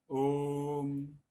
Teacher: यहां हमने ओ में इसको और ज्यादा दीर्घ से भी ज्यादा समय उच्चरित किया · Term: प्लुत स्वर